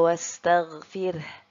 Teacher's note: huruf RO nya kita baca tipis ya karena ro sukun sebelumnya ada huruf yang berharakat kasroh